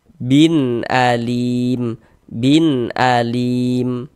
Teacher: Kemudian lim dibaca panjang. Ini namanya adalah mad arid lisukun.